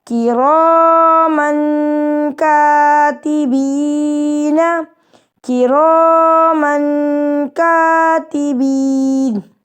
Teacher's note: دو زبر کی تنوین کے غنّے کے ساتھ ملا کے پڑھیں گے